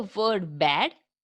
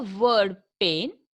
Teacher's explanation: The sounds which are articulated with the help of the lips are called labial sounds, and the sounds are articulated with the upper and lower lips. Such sounds are called bilabial sounds. The point of maximum constriction is made by coming together of the two lips.